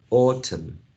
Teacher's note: we have a schwa in the unstressed syllable